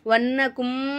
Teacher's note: வன்னக்கும் நூனுக்கு மேலே சர்து இருக்கனால நல்லா நம்ம நூனை அழுத்தி உச்சரிக்கணும்.